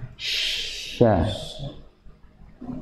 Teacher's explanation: udara ini keluarnya dari celah-celah gigi yang tidak merapat, hanya mendekat saja antara gigi atas, deretan gigi atas dengan gigi bawah.